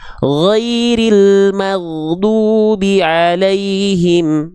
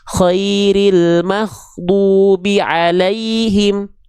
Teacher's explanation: Jadi kalau teman-teman melafalkan kalau dikoreksi sama gurunya enggak itu tertukar sama huruf K tandanya bocor huruf ginnya. Gin itu enggak boleh keluar nafas. Kalau keluar nafas jadinya k. · Banyak yang melafalkan khairil maghdubi alaihim. Kenapa suka sering tertukar gin dan k? Karena mereka dilafalkan dari tempat yang sama.